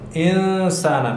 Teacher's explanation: انسان نون ساکن ده وروسته ترنه سین د 15 حروفو کې شته نو دلته موږ اخفاء کوو